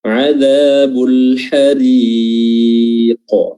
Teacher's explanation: Kurang panjang 4 harokat lagi